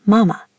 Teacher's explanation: The second ma here is neutral. It's light and quick, almost like a whisper. · the neutral tone, which is unstressed and short. It often appears at the end of words or in grammatical particles, like ma in mama, meaning mother.